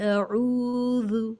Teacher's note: عو کو جو آواز ملتی ہے حمزہ کی آواز سے، لیکن درمیانی حلق سے پڑھیں عو، اور 2 سیکنڈ لمبا کریں یا کچھ کھینچ کر پڑھیں، تھوڑا سا اسٹریچ کر کے پڑھیں عو. اور ذال کو نرمی کے ساتھ اس طرح ادا کریں کہ ذال میں سیٹی کی آواز یا ساؤنڈ، بز ساؤنڈ بالکل بھی سنائی نہ دے، اور یہ حرف باریک ادا ہو. باریک مطلب لائٹ ساؤنڈ کے ساتھ میں، اور اس کی ادائیگی میں زبان کی کچھ نوک سامنے کے دانتوں سے تجاوز کر جائے اور اس طرح پڑھے اعوذ.